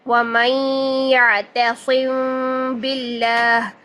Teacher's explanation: ٹھیک ہے، یہاں سے یہ تھوڑی سی سپیس جو آپ کو خالی سی سپیس نظر آ رہی ہے، اتنی سی ہلکی سی سپیس جو ہے نا وہ آپ کی ہونٹوں کے درمیان رہنی چاہیے. یعنی اوپر اور نیچے کا ہونٹ آپس میں نرمی کے ساتھ ٹچ ہو، لیکن اتنی نرمی کے ساتھ ٹچ ہو کہ بیچ میں سے آپ کہہ لیں کہ ہوا کا گزر بسر ہو رہا ہو. بس سامنے والے کو یہ بھی پتہ نہ چلے کہ آپ کے ہونٹوں میں گیپ ہے، لیکن آپ کے ہونٹوں میں وہ گیپ ہونا چاہیے، تب ہم اس کی آواز کو صحیح سے چھپا سکیں گے.